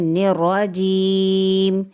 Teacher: یا ساکن اس سے پہلے زیر یا مدہ کو ایک الف کے برابر کھینچ کر پڑھیں گے